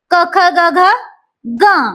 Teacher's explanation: यांचा उच्चार करताना कंठाचा विशेष उपयोग होतो म्हणून याला म्हणायचं कंठवर्ण क इथ तान पडतो ख इथ तान